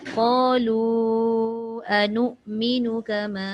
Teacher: قالوا أنؤمن كما Tu sekejap anu qalu anu'minu tu tak panjang sebab hamzah dekat atas alif